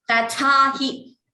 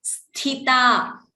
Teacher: Similarly, next line also tha mahaprana, sthita. So the tha should be chanted clearly as mahaprana.